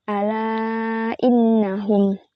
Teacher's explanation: Mad tabi'i yang bertemu dengan hamzah tidak dalam satu kata. Cara bacanya dipanjangkan hingga lima harakat. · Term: mad jaiz munfasil